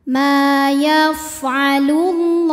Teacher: lam yang menghadapi huruf Syamsiah yaitu huruf lam maka cara bacanya alif lam tidak kita baca dimasukkan langsung ke lam berikutnya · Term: Idgham Syamsi